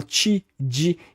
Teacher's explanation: também fazem a palatalização dental de t d